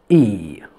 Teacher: this e is front it means when i pronounce it i feel that my tongue is advanced forward e and this e which is long e is tense not